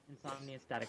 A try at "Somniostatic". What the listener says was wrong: no, not insomnio. Somnio without the in.